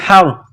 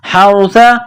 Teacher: ح ہے جو گلے کے درمیان سے نکلتی ہے